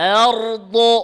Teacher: হামজা পাতলা করে র মোটা করে ضاد মোটা করে